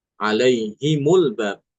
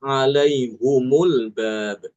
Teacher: maka di sini ha domirnya tidak dibaca kasroh ya, tapi dibaca dengan domah.